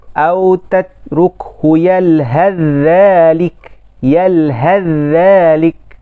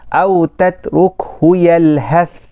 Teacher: Dekat sini sa bertemu dengan zal, bila kita sebut dia apa? Bila kita sebut, maka bunyi sa tu hilang. Bunyi sa hilang. Hanya bunyi zal saja. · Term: idgham secara kamil